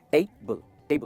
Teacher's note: जो first part है ना वो स्ट्रेस होता है